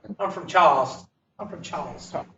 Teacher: Anybody from Charleston knows that Charleston doesn't have an R in it.